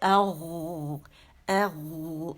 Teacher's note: غین جو ہے یہ موٹا ہے اور یہ ادن الحلق سے نکلتا ہے. ٹھیک ہے, ادن الحلق یعنی زبان کی جو جڑ ہے اور حلق کا آخری حصہ اور زبان کی جڑ کا بالکل پاس کا حصہ.